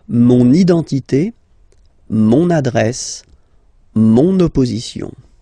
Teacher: you can hear now this little link, so you've got to pronounce this N